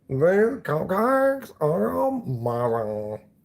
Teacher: And he says, like, oh my God, these cupcakes are amazing. He does that vocal fry thing, like maximally so.